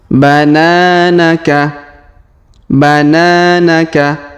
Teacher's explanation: huruf na kita panjangkan dua harakat karena Alif di depannya bananaka bananaka kemudian malaa malaa malaa Kemudian